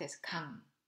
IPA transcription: kang